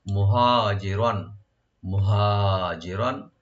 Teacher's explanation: হাটাকে open রেখে গলা শেষ থেকে আনবো আমরা, একালে টানবো, মুহাজি রন, রন রার উপর যে তানবিন যেখানে আমরা এজাহার করবো, গুণ হবে না, মুহাজিরন।